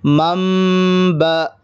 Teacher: نون کو میم سے بدل کر غنہ اور اخفا کے ساتھ پڑھیں گے۔ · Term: اقلاب